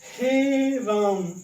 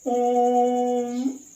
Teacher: जैसे राधे तो इस तरह से जो है यहां पे क्या होता है दोस्तों? हम ह्रस्व का तीन गुना या उससे अधिक समय लेके बोल रहे हैं। जैसे राधे इस तरह से या यहां पे हम कहें ओम तो इस तरह से ज्यादा समय लेके अगर यहां पे हम बोलते हैं ह्रस्व के तीन गुना या उससे अधिक समय लेके तो ये होते हैं दोस्तों याद रखेंगे ये होते हैं प्लुत स्वर।